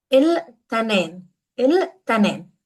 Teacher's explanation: In standard Arabic, that's al-ithnain with a tha. However, we always pronounce it as il-tanin in colloquial Lebanese.